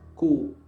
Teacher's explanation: makhrajnya huruf Kaf itu adalah pangkal lidah ke langit-langit belakang